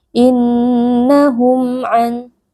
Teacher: Innahum ada nun tasydid wajib dibaca dengan berdengung.